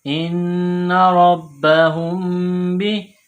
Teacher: میم ساکن کے بعد با ہے تو یہاں غنہ کریں گے